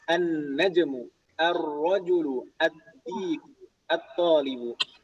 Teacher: Makanya kita membacanya tadi langsung idgham, lamnya tidak kita baca secara jelas, tapi langsung idgham ke huruf setelahnya